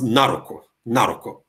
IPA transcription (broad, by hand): 'naruku